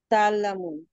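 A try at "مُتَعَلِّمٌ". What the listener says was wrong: না, মিম পেশ মু। আচ্ছা, আর সেকেন্ড রেডিকেলে জের করে দিতে হবে, মুতাআল্লিমু।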